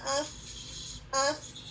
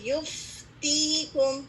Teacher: فا کی ادائیگی کے دوران ہوا نکلتی ہوئی محسوس ہوتی ہے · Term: رخاوہ